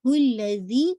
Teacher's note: زال کا مخرج ہے، ٹپ آف دا ٹنگ آپ کے فرنٹ ایج جو دانتوں کا جو نیچے کا کنارہ ہے نا بس اسی کے ساتھ ہلکی سی لگے گی، باہر آئے گی